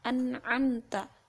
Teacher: Kalau huruf hamzah itu di bagian pangkal tenggorokan, sedangkan huruf ain itu berada di pertengahan tenggorokan. Jadi dibedakan tempat keluarnya itu di bagian hamzah tadi di bagian pangkal, kemudian ain tadi di bagian pertengahan tenggorokan.